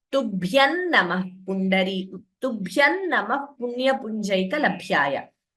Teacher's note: So anuswara is replaced by n by the rule of sandhi.